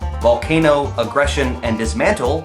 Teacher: Volcano, aggression, and dismantle all have an accent on the second syllable.